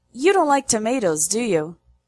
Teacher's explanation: so the question tag has a low, not a high intonation.